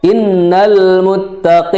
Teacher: jadi ada gunahnya ditahan dua harakat